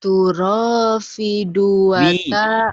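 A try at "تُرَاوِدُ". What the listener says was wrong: Wi atuh. Wi. Turawi. Iya bukan fi. Turawidu.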